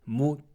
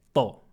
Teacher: Elles ont le même point de prononciation. L'une est aiguë et l'autre est grave.